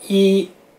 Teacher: 一声就是最高的调值，比如说一，它整个这个发音都是在最高的值上